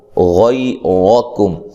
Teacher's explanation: اب یہاں یہ یا لین ہے، ٹھیک ہے، را کو موٹا ادا کرنا ہے، اس کے اوپر زبر ہے، کاف کو باریک پڑھنا ہے اور میم ساکن کو ہلانا نہیں ہے، صرف حروف قلقلہ کو ہلا کر پڑھا جاتا ہے، جیسے یہ آپ کو میں نے پڑھایا۔